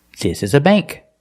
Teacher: words with ANK and ANG use the long A sound, like plate and date.